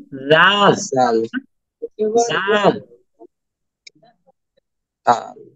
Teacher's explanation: উপরের দাঁতের যে আগাটা আছে এটা জিহ্বার আগার সাথে মিশবে